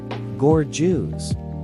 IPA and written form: ˈɡɔrdʒəs (gorgeous)